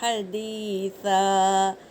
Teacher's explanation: وقف کی حالت میں دو زبر کو ایک زبر پڑھیں گے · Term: الف مدہ